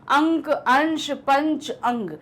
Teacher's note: जब आप बोलोगे तो इसमें नाक से जो है वो हवा ज्यादा निकलेगी और मुख से उतनी नहीं निकलती। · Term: अनुस्वार